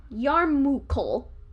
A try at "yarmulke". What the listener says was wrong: So you not only pronounced the word wrong, but you also flipped two of the letters in it.